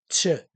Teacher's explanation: la t seguida de la fricativa postalveolar